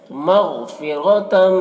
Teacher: یعدکم مغفرۃ، غین کو پر پڑھیں گے کیونکہ غین حروف مستعلیہ میں سے ہے۔ را کو پر پڑھیں گے کیونکہ را کے اوپر زبر ہے۔